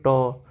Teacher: आप जब बोलोगे तो जीभ आपका मुड़ जाएगा और उसके बाद उसमें टकराएगा तभी आप बोल पाएगे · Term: मुर्धा